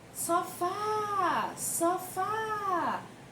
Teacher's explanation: Qual seria a sílaba que está puxando aí, que a gente mais prolonga para falar nessa palavra? Seria o fá. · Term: oxítona